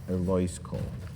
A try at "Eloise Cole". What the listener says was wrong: But you said it like it was one word. You said like Eloise Cole.